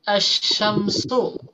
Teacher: ketika bertemu dengan huruf syin di mana huruf syin ini huruf Idgham Syamsiah maka huruf lam ini tidak dibaca · lamnya tidak dibaca tetapi masuk ke huruf berikutnya